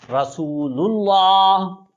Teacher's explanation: لام پر پیش دیں پھر بھی پر ہوگا۔ اگر اس سے پہلے زیر والا حرف ہوگا تو پھر اس کو پر نہیں کرنا۔